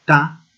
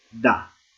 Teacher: Ta es un sonido más cortado, por eso se llama sorda, y da, la D, por ejemplo, la palabra diente, es un sonido no tan cortado, por ende se llama sonoro